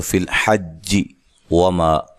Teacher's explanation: واو کو ادا کرتے ہونٹوں کو گول کرنا ہے